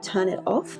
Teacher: And when I was younger, the same low-class associations were also attached to glottaling word final T before a following vowel